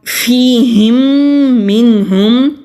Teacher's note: فِيهِمْ مِنْهُمْ، یہاں بھی میم ساکن کے بعد میم آ رہا ہے یعنی کہ ادغام شفوی کریں گے، میم کو میم کے ساتھ ملا کر پڑھیں گے اور غنہ کریں گے